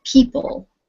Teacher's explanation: two syllables and the stress is on the first syllable